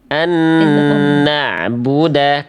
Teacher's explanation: di huruf nun tasydidnya an ketemu nun itu idgham bigunah, tahan dulu · nun sukun ketemu nun lagi menghasilkan tasydid di nun yang kedua. Namanya hukum tajwid idgham bigunah